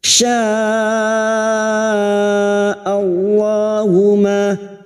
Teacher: lam jalalah yang didahului fathah kita baca tafkim.